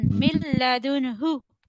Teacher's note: Mim connect with lam. After noon the next letter is lam. So there is idgham bi ghayri gunna.